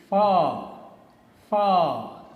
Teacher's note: spoken with the help of your upper teeth and lower lip